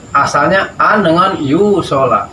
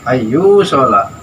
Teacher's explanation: Asalnya an dengan yu sholat. Karena nun ini bertemu dengan iya, maka dinamakanlah idgham bi guna.